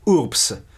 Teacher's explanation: we know that the Latin will have pronounced it with a P, urbs, that is, with a sequence voiceless plosive plus end in the coda.